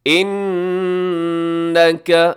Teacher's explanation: انکا نون مشدد ہے، یہاں غنہ کیجیے گا